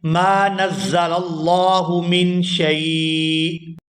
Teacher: یہاں پر ہم نے حمزہ پر وقف کیا، حمزہ کے نیچے دو زیر تھی تو ہم نے وقف کی وجہ سے اس حمزہ کو ساکن کر دیا